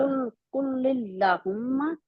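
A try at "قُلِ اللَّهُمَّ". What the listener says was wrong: नहीं, आप कुल नहीं कहेंगे क्योंकि लाम के ऊपर पहले लाम के नीचे जेर है, नहीं पढ़ेंगे, कुलिल्ला, और लिल्लाह, लिल्लाह मोटा नहीं पढ़ना। कुलिल्ला, कुलिल्लाहुम्मा, ला फिर लंबा भी होगा, दो हरकत के बराबर। पढ़ते हैं कुलिल्लाहुम्मा, आप नहीं लंबा करते ना, लिल्ला, लिल्ला, कुलिल्लाहुम्मा।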